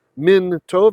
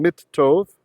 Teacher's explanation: So min, the noon, assimilates in the tet. Min tov became mit tov.